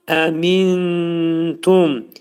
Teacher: Tə hərfi ixa hərfi olduğuna görə nun hərfi tənin məxrəcində gizlədilir.